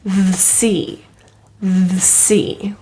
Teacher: The word the also has a schwa pronunciation because the next word starts with a consonant. So you won't hear the C, but the C.